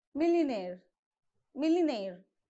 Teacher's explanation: All right, so you have to stress on nair.